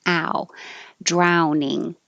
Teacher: So the vowel is ow. You're starting with the jaw very open and the tongue flat. Ow. And moving to higher, your tongue higher, and rounded lips.